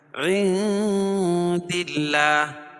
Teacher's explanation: نون ساکن کے بعد حروف اخفا کے 15 حرفوں میں سے دال ہے تو یہاں ناک میں آواز کو چھپا کر پڑھیں گے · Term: اخفا حقیقی